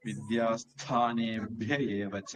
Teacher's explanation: அந்த விசர்க்கம் அடுத்தது ஏ வந்ததுனால அது மறஞ்சிடும் அப்ப அந்த இடத்துல விசர்க்கம் சொல்ல வேண்டியதில்ல சேர்த்து சொல்லும்போது வித்யாஸ்தானே ஏவச அப்படின்னு